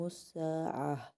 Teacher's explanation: یہاں پر روکے تو تا مربوطہ جا کے ہاں میں بدل جاتا ہے